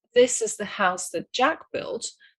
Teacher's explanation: the key words are this, house, and Jack, and the rest will have to be squeezed like an accordion. In other words, they will become weak forms.